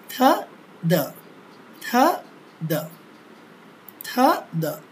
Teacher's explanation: ঘর্ষণ হবে। সামান্য ঘর্ষণের মাধ্যমে ধ্বনিগুলো সৃষ্টি হবে বিধায় এদেরকে বলা হয় হচ্ছে ড্যান্টাল